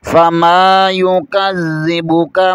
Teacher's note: کاف کو بریک پڑھیں گے، کاف کو پر نہیں پڑھیں گے